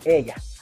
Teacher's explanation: Su descripción articulatoria es en el palatal lateral